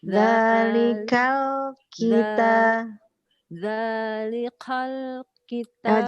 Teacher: Zalik K-nya agak hamas ya. K-nya coba agak dikeluarkan hamasnya.